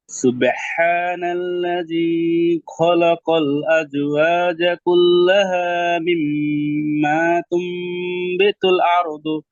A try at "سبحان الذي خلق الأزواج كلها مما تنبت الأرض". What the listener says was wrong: আরেকবার, সুবহানাল্লাযী খটা আরেকটু ভিতরে ঢুকেন, জিহ্বার গোড়াটা ভিতরে ঢুকাই দেন। খ খ ধরেন গলায় গলাতে কাটা আটকালে আমরা কিভাবে পড়ি? খ, এটা দিই না? খ, জি।